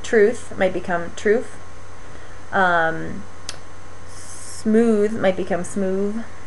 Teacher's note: interdental fricatives, these are sounds like th and th, like the word the and these. These sounds become labiodental fricatives like F and V